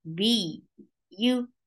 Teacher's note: B, you, there is nabar. When you are attaching ba with ya, this is the place where you create nabar, and nabar is a jump up sound. B, you is short, and ya will stay very soft.